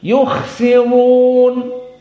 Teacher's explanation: Antum dengar beda qiraah jumhur di tafkhim. Yukhsirun karena memang jumhur membaca dhammah ra tafkhim.